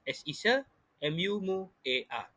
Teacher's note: Jadi cara untuk menyukukan perkataan semua ialah as isa mu a, di mana UA, vokal berganding UA mengandungi satu proses labialisasi, di mana ada peluncuran bunyi W pada tengah-tengah huruf vokal U dan A